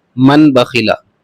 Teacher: تو یہاں پر آپ کو نون ساکن کی بجائے آپ کو میم ساکن پڑھنا ہے، بس ہلکا سا خیال رکھنا ہے، نون ساکن کو میم ساکن سے بدل دیجیے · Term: اقلاب